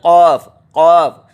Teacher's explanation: قاف منہ بھر کے اندر سے بولیں گے قاف، قاف، جڑ زبان حلق سے لگنے لگے گی تالو سے، قاف۔